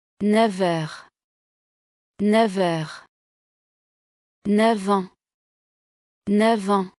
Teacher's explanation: Before R or N, use liaison, F becomes V.